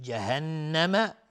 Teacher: نون مشدد دو حرکت غنه میدیم